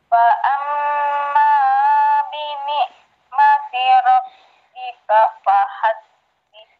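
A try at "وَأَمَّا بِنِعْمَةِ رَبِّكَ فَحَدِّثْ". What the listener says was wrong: Belum, wawu bukan fa. Wa.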